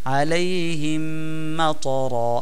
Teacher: মিম সাকিনের বামে মিম আসিলে ইদগাম করিয়া কুন্নার সহিত পড়তে হয় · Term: ঈদগামে মিসলাইন